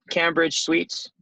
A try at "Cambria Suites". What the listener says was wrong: It's not. It looks like Cambridge when you first look at it, but it's Cambria. Cambria.